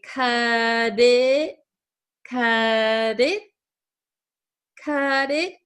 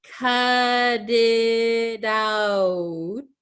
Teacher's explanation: this is going to change to a flap T also so it's going to sound like a D sound cut it out so this last T is kind of going